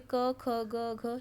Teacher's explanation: क वर्ग का उच्चारण कंठ से होता है।